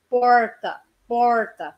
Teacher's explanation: Chamo de R engolido, aquele R do interior de São Paulo